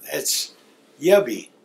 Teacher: You'll notice that there's a vowel before the P and after the P, and it makes that P make a B sound.